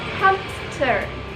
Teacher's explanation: A voiceless stop with the same place of articulation as the nasal consonant is inserted. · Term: voiceless stop insertion